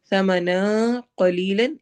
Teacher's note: ثمنا قلیلا، سا نرمی سے، ثمنا قلیلا اخفا ہو رہا ہے، نون کے آواز کو چھپائیں گے، قاف کو موٹا ہیوی کر کے پڑھیں گے